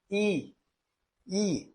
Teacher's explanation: Os dois movimentos se acentuam. Quando dizem I, a elevação da língua em direção ao palato duro é máxima.